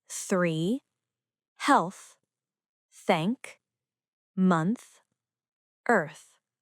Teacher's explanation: The letter group TH can be pronounced th, as in 3, health, thank, month, earth. This is a voiceless dental sound. The tongue touches the teeth and air passes out. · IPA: /θ/